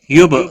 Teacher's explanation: یب با ساکن پر قلقلہ ہوگا